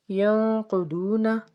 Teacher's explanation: ینقضون، نون ساکن کے بعد قاف، یہاں پہ اخفا ہوگا۔ قاف اور ضاد کو ہم پر پڑھیں گے کیونکہ یہ حروف مستعلیہ میں سے ہے · قاف اور ضاد کو ہم پر پڑھیں گے کیونکہ یہ حروف مستعلیہ میں سے ہے۔ آگے واو ساکن سے پیچھے پیش ہے تو ایک الف کے برابر کھینچ کے ادا کریں گے